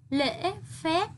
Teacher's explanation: Hãy đọc đúng thanh ngã ở tiếng lễ. Chú ý đọc kết thúc tiếng phép, môi khép kín.